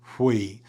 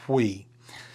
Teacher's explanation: So it's going to be like a we. So you're gonna have a little bit of a breath in front of it like we with almost an h in front of like a wei.